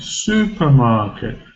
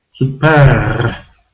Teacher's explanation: And in the word super we've got a suffix, er suffix. So we know this is going to be schwa sound because er suffix is always schwa sound